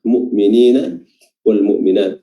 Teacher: Fatanul mu'minina, di sini juga kembali kita bertemu dengan alif lam yang bertemu dengan mim, namanya alif lam al-qamariyah. Huruf lamnya dibaca jelas, dibaca izhar